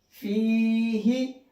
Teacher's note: फा या जेर फी, हा जेर ही, फी ही। अब यहाँ पर मैंने फा को तो खींचा है लेकिन हा को नहीं खींचा है। क्यों? क्योंकि यहाँ पर या मद्दा है, या साकिन है और उससे पहले जेर है, और यहाँ पर सिर्फ हा के नीचे जेर है।